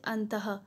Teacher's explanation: विसर्ग को जो है हम ह से उच्चारित कर सकते हैं, जैसे अंतः यानी ह आ रहा है ना पीछे से।